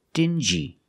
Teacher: these two words have the regular n Sound n plus the J like juice together